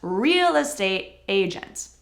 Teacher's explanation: Real estate. Real is stressed and estate is not as stressed.